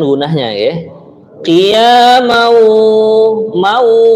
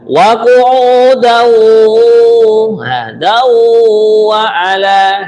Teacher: di sini gunah tanwin bertemu dengan wawu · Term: idgam ghunahnya